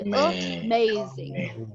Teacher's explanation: do not drop your jaw when you say amazing it has to be uh uh sound as though it is coming when you just parted your mouth a little bit